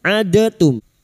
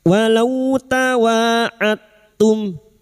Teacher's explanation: Memasukkan huruf yang mati kepada huruf berikutnya dengan menghilangkan kolkolanya. Jadi pantulan atau kolkola dari huruf dal ini hilang karena masuk pada huruf ta. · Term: idgham mutajanisain